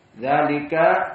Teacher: Dzalika semuanya dzalika haruf muraqqaqah. Karena semuanya istifal dzalika enak di mulut, tidak mufakhamah di atas langit-langit.